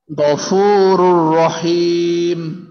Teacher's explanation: শুধু গুন্না ছাড়া, গুন্না ছাড়া খালি মিলায় পড়বো আর কি, মিলায়